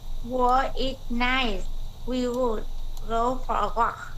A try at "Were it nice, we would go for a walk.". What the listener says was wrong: Very good. Correct.